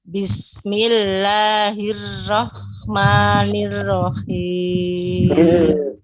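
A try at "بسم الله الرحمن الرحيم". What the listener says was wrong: Itu tidak menaikkan pangkal lidah. Ya, lekungkan lidah bagian tengah yang belakangnya agak naik. Bismillahirrahmanirrahim.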